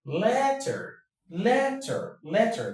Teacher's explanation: The first syllable takes the stress. The second goes down.